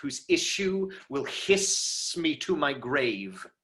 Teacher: you can lean into it enough to draw out that hiss